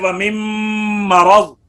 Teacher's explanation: اسی طرح وَمِن مَرَضٍ، را پر ہے مرض کا، تو یہاں پر را کی تفخیم جو ہے، کیونکہ را کے اوپر زبر ہے تو را کے زبر کی حالت میں را پر ہوتا ہے، تو کہیں میم جو ہے وہ بھی پر نہ ہو جائے